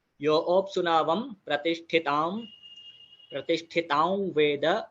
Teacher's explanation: यहाँ पर बहुत लोगों का ठ बराबर नहीं निकलता, वहां पर ट निकलता है, वहां पर हमें ध्यान देना है, महाप्राण अक्षर